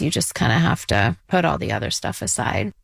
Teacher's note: every last word has like a rising tone every single time